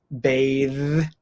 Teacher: we have the verb bathe with the voiced th